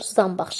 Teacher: Samitlərin tələffüzündə bir məqamda n ilə bağlıdır ki, əgər n samitindən sonra b və m samitləri gələrsə, n tələffüzdə m kimi tələffüz olunacaq. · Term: n, m-ya keçdi